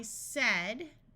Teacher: notice this is one of the few words where AI has the short E sound of eh.